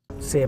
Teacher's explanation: the e sound in C slides to the next word u creating a link